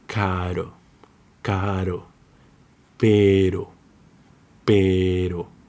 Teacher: But when it's between vowels, it's softer. It's like a soft flap, like American English TT in butter, similar to the Arabic ra, caro, caro, pero, pero.